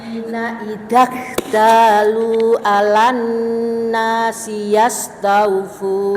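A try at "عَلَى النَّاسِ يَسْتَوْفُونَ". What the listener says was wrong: Ainnya yang kurang masuk sedikit gitu. Alan nasi kurang ke tengah.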